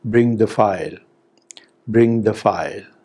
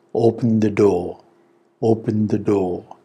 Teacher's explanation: the third type of sentence which is said with the falling tone is commands